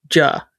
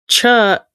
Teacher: They're like two paired consonants and one it's the same. Your mouth makes the same shape but the J engages your vocal cords and a ch does not